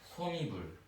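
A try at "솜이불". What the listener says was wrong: 요거를 소미불 이러죠. 근데 사실은 요건 이제 틀린 발음이라 볼 수가 있어요. 정확한 발음은 뭐냐? 니불이에요. 니불. 요렇게. 이렇게 된다는 거죠.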